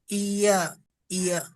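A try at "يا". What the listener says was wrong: টান দেন, এক আলিফ পরিমাণ টান, ইয়া ইয়া।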